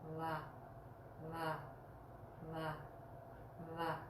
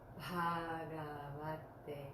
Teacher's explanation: Now the thing that looks like a V, we pronounce that very softly. There's no hard V in Sanskrit. It's very soft. We put the upper teeth on the inner moist part of our lower lip to make a va, va, va, va sound. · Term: soft va